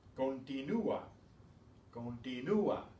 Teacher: Notice how that makes ua, not wa, but ua, because you pronounce that U separately.